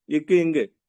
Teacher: நாக்கோட அடிப்பகுதி வந்து அன்னத்தோட அடிப்பகுதி தொட்டா